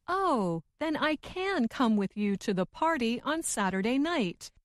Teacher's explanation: the more wanted to emphasize or make her meaning clear, the slower she said the word can